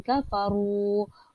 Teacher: ru dibaca secara tebal dan dibaca secara panjang kerana dia mad asli